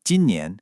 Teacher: 今 年 is a first tone, then a second tone. So high and flat, then rising.